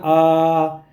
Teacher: तो विवृत को समझ लेते हैं कि जिन स्वरों के उच्चारण में मुख द्वार का जो है सबसे अधिक खुला होता है उसे विवृत स्वर कहते हैं। विवृत कहेंगे जब हमारा मुंह पूरी तरीके से खुल जाता है तो हमें विवृत बोलते हैं। जैसे जब हम बोलते हैं बड़ा आ तो देखिए हमारा मुंह पूरा खुल जाए खुल गया ना आ तो इस इसको जो होता है हम लोग विवृत बोलते हैं।